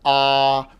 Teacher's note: If I say a vowel ah, my mouth is just open and the air goes out unimpeded